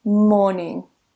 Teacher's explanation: in morning we don't pronounce that R in British English. There are some varieties where they do pronounce that R, but in standard RP they don't.